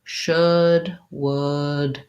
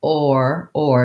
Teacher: my tongue is much higher and my jaw is much more closed